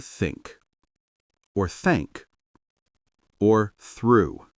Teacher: Notice how your tongue touches your teeth, not behind them, not above them, but between.